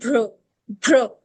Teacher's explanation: So this will be भ्र भ्र C R क्र क्र नॉट क्र क्र मतलब पूरा वो साउंड नहीं आएगी। छोटी सी र की साउंड आएगी। जैसे आधे र की साउंड आएगी।